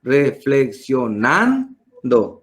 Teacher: Es una palabra llana grave porque se carga la voz en nando.